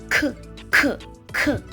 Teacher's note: It's similar to k, except it has more air to it compared to the k sound. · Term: aspirated sounds